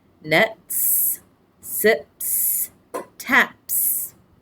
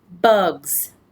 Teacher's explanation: so the difference here is that the s is voiced